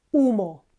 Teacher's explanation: again, H is not pronounced. All we say is humo.